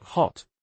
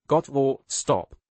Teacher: They use a short, open a sound. So, like the O in got or stop.